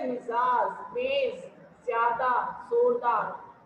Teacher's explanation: जीभ मूर्धा को हल्के से छूती हुई हवा हल्की सीटी बजाते हुए बाहर निकलती है